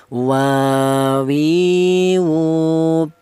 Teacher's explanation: huruf berasal dari kedua bibir yang renggang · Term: huruf wau